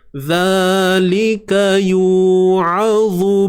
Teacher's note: huruf ain dari atas sempitkan tengah kerongkong.